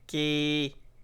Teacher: La consonne initiale est moyenne, donc le ton est bas.